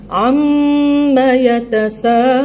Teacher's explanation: bunyi di hujung tu lun, dekat nun baru bunyi dengung